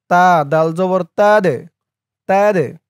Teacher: ধাক্কা দিয়ে পড়তে হবে, কলকলার হরফ এই দাল।